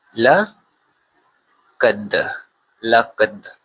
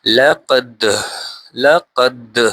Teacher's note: اب یہاں پہ قلقلہ ہو رہا ہے دال پر